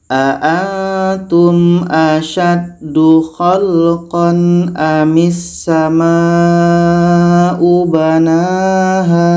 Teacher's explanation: Pada ayat 27 ada satu mat, tanda mat bertemu hamzah dalam 1 kalimah. Ini mat wajib muttasil 5 harakat.